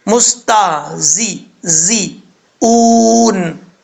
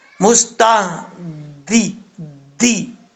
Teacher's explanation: اوپر والے دانت اور نیچے والے دانت، ان دونوں کا کنارہ، جو سامنے والے دو دانت ہوتے ہیں اوپر والے اور نیچے والے، ان دونوں کا کنارہ زبان کے ساتھ ٹچ نہ ہو، زبان کے ساتھ نہ ملے. زبان کو تھوڑا سا پیچھے رکھے، کم از کم اتنا گیپ ہو کہ سیٹی کی آواز نکل سکے، تو یہ زا پڑھا جاتا ہے · زا زیر زی، سیٹی کے ساتھ پڑھا جائے گا زا